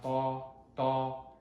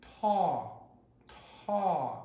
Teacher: T, makes the sound da, da, but when it's aspirated, it is ta, ta